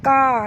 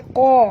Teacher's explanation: Wa inna lafa'ilun. Qalu, qa tebal, ya, jangan baca ka tapi baca qa